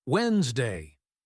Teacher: Native speakers say Wednesday. That first D completely disappears. It's like the letter doesn't even exist.